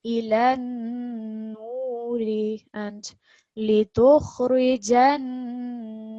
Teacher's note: more stress and more of a nasal sound on the nun mushaddad in both of these cases.